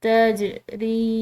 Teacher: جیم حروف قلقلہ کا ایک حرف ہے، اس کو ہم نے ہلا کر ادا کرنا ہے